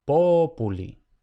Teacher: Por tanto, pu no lleva el acento se va una sílaba hacia atrás.